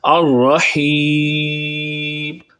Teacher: آخر پہ وقف یعنی سٹاپ ہونے کی وجہ سے یہاں پر مد عارض ہے، اور جس کی وجہ سے آخری لفظ لمبے پڑے جائیں گے